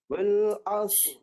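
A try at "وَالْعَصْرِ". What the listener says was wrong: Itu dah cantum dah. Asr tu cantum. Asr. Pisahkan sod dengan ra tu. Asr.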